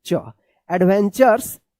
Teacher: टी के बाद यू है और लास्ट में आर ई है तो क्या है कि इस टी यू का च उच्चारण होता है